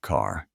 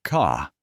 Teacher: A word like car sounds very clearly like car. In the British accent, they tend to soften the R sound, especially at the end of a word. So car sounds more like ca.